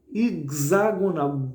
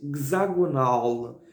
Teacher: hexagonal com X, mas tem esse som de GS